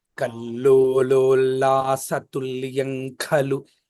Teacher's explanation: తుల్యం కలు అన్నప్పుడు నేను నోరు మూయట్లేదు